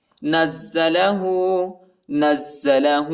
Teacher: نون کو زا کے ساتھ ملائیں گے اور زا کو سختی کے ساتھ، شدت کے ساتھ پڑھیں گے